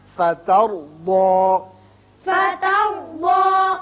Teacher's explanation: تا باریک، را پر، ضاد بھی پر